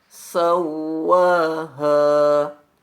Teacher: bertasydid tetapi tidak disebabkan oleh faktor bertanwin atau daun sukun maka huruf wow bunyikan dengan sifat gunanya tetapi cukup satu harokat saja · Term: huruf wawu bertasydid